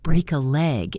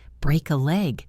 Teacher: Notice how the words flow together. Break a leg. It almost sounds like one long word.